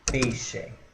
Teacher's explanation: o I desaparece foneticamente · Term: variação linguística